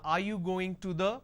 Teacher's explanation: Now, are you going to the is flat.